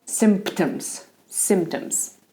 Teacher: So you make the P, but you don't explode the air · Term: P is quiet